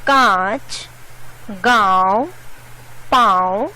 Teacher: इसका उच्चारण नाक और गले दोनों से होता है। इसे अनुनासिक या चंद्र बिंदु कहते हैं।